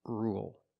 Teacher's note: now let's talk about rule with rule we don't say rule there's no y it's just R dark L